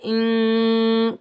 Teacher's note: حمزہ کو نون کے ساتھ ملائیں گے، بغیر کھینچے پڑھیں گے